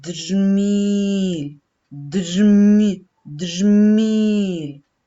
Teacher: Перший звук, який ми чуємо, дж. Звук дж твердий, приголосний.